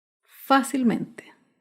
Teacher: se acentúa en la sílaba anterior a la antepenúltima sílaba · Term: sobre esdrújulas